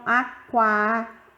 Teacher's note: a letra U é a semivogal e a letra A é a vogal, porque sai o som mais forte. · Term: ditongo crescente